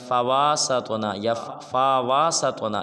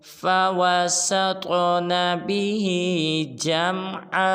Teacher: جب سین کو طا ساکن کے ساتھ ملائیں گے تو قلقلہ کریں گے، یعنی کہ طا کو ہلائیں گے